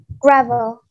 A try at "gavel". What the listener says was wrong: Not gravel. Gravel is dirt with rocks mixed together. No R. Gavel. Yes, gavel.